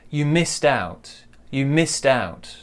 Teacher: So our stress is on missed, right?